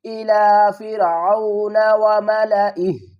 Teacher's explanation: हम स्टॉप करेंगे तो हा को साकिन पढ़ेंगे।